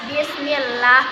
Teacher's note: maka cara membacanya tarqiq atau tipis